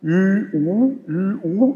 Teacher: Die haben zwar die Lippenrundung gemeinsam, aber ich muss die Zunge woanders ansetzen. Wenn Sie das mal hintereinander sprechen, Ü, U, Ü, U, merken Sie, wie sich die Zunge bewegt.